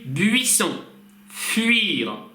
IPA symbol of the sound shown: ɥ